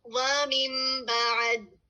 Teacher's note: نون ساکن کے بعد با آ رہا ہے تو ہم نے نون کو میم میں بدل دیا. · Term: اقلاب